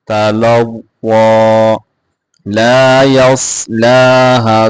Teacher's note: صاد کو موٹا کر کے پڑھیں گے، لام کو کھینچ کے پڑھیں گے، ہا کے اوپر مد کر کے پڑھیں گے.